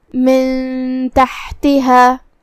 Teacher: من تحتها یہاں بھی حکم ہے اخفاء، ہم یہ حکم کو ایسے ادا کریں گے. من تحتها ہا پہ جزم ہے تو ہم ہا کو جزم سے ادا کریں گے اور اسے حلق کے درمیان والے حصے سے